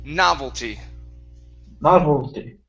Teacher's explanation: the stress is at the beginning